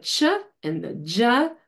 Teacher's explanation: there's elevation of the tongue tip to produce the chuh and the dzuh